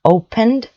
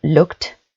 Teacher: opened sounds like a D, the D at the end, and looked is actually a T sound, a T. But you never thought about it maybe because obviously it's written with ed at the end.